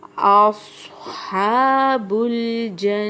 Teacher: اصحاب الجنتی، صوت کو موٹا کر کے پڑھنا ہے، لیکن اس کا یہ مطلب نہیں ہے کہ میں حمزہ کو پر کر دوں گی